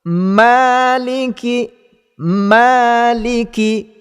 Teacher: Baiklah, kesalahan yang ketara yang biasa berlaku kepada pembaca Al-Fatihah ialah dalam ayat yang keempat ini, apabila pembaca Al-Fatihah menambahkan syaddah ataupun menambahkan sabdu pada huruf mim. Perkara ini akan berlaku apabila pembaca membacanya dengan menekan suara ataupun sebutan huruf mim pada kalimah maliki.